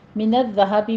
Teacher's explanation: ذال کے اوپر تشدید ادا کیجئے اور آپ نے تشدید کے ساتھ سیٹی کی آواز نہیں پیدا کرنی، نرمی کے ساتھ پڑھنا ہے